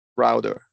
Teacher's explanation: you want to flap the T in router.